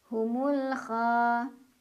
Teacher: Cara bacanya lam dibaca jelas, diidharkan. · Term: alif lam qamariyah